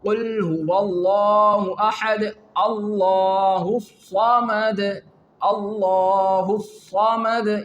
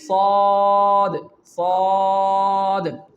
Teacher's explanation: Whole mouth is involved in its pronunciation and the tongue is also rising in our mouth.